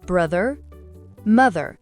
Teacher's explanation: Faites vibrer la langue entre vos dents.